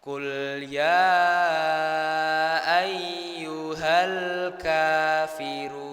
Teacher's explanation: kita sebisa mungkin jangan sampai memantulkan huruf lam karena huruf lam itu bukan huruf qol qolah ya.